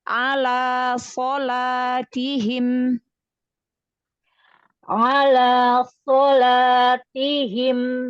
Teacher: Naikkan lagi, tampakkan lagi sifat itbaq pada sod. Suaranya tabrakin ke langit-langit atas.